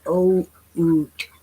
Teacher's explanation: they aren't saying oot, they're saying o oot, pronouncing both vowels, O and U.